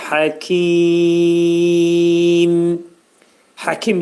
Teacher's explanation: Ağız yumulur və mim hərfi dodaq hərfidir.